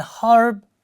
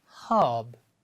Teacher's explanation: h e RB becomes hub for British and harb for American American people produce this R even if it is followed by a consonant but British people don't pronounce